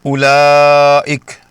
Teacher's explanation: تو یاد رکھیں، تلاوت میں اسے لمبا نہیں کرنا، اس کا صحیح تلفظ ہے اولئک، یعنی حمزہ کی پیش کو بغیر کھینچے سیدھا اگلی لام سے ملا دینا ہے، واو کو بالکل ہضم کر جانا